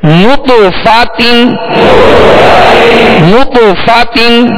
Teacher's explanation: جب نطف کہیں گے تو ہونٹوں کو گول کریں گے کیونکہ نون پر پیش ہے. فا کی زبر پڑھتے ہوئے آواز اور منہ کھولیں گے، تا کی دو زیر پڑھتے ہوئے آواز کو گرائیں گے